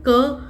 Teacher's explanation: क कहां से आ रहा है आपके कंठ से आ रहा है